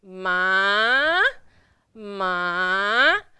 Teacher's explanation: remember going down ma and then up ma ma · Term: number three